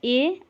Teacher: अ ई मिलके ए बन गए, तो अ कंठ से बोला जा रहा है और ई तालु से, तो कंठ तालु हो गया। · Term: कंठ तालव्य